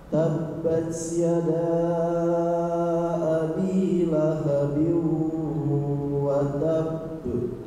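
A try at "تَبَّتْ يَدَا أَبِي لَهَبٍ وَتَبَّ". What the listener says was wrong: Tinggal taknya Pak. Ta sukun itu tidak ada suara ke huruf S Pak, seperti tabats, bats. Tapi lebih ke percikan aja Pak. Bat, gitu ya. Tidak bats, tidak ada suara S-nya ya.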